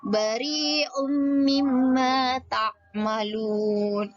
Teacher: Perhatikan ada tanwin bertemu dengan huruf mim, itu adalah hukum bacaan idgham bi gunnah. Tanwinnya langsung melebur, tidak dibaca un, tapi bari'um langsung melebur ke huruf mim. Bari'um mimma ta'malun.